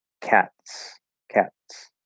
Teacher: we're not really trying to say the T part we're just kind of trying to push the S through and so it kind of just it creates a weird s